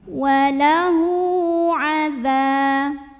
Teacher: La juga mad tabi'i karena ada alif yang didahului baris fathah. Cara bacanya dipanjangkan zalnya 2 harokat.